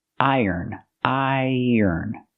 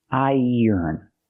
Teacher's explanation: Make the long I sound plus the y sound like yellow and yesterday. Iron. Then the sound like burger.